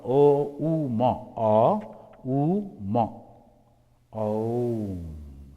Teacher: The first letter A is the root sound, then pronounced without touching any part of the tongue or palate. M represents the last sound in the series, being produced by the closed lips